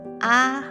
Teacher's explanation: when I spoke the word ah, I took my tone up. That's because the B or yi xia is the highest tone.